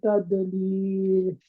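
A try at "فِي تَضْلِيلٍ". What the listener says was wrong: फी तदलील फी तद, तद नहीं होगा ना, ये तद जब आप कर रहे हैं क्योंकि आपकी जुबान जड़ पीछे से उठी नहीं हुई है जुबान की, इसीलिए आप तद दाल के मखरज पे जा रहे हैं आसानी से।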